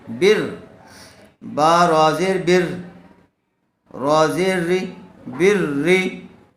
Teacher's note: یہاں را سے پہلے زبر آیا ہوا ہے لیکن را کے نیچے زیر آیا ہوا ہے اس لیے را کو باریک کر کے پڑھیں گے